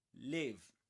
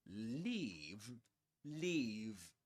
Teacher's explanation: Okay, you see the difference? It's a short sound in live and a long sound in leave.